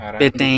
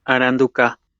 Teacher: there's a contrast of nasalized vowel versus prenasalized stop